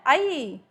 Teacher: आई पूरा खोल के एकदम से बंद होता है